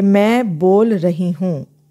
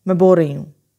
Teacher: मैं ये नहीं कहूँगी मैं बोल रही हूँ. मैं लाम को रे में मिक्स कर दूँगी कि लाम अभी पूरा बोला नहीं और साथ ही रे साउंड को, रही की रे साउंड को पकड़ लेती हूँ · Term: कोआर्टिकुलेशन इफ़ेक्ट